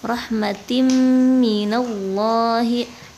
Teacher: Idgham bi gunnah, dibacanya dimasukkan ya tanwinnya ke huruf mim